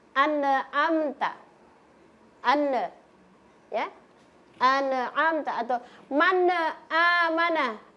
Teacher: maka nun sukun dan tanwinnya dibaca jelas. Jelas atau terang. Jadi tidak boleh kasih-kasih samar ini. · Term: izhar halq